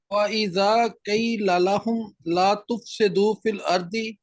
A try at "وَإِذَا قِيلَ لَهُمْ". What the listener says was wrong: قی کی بجائے قیل لہم.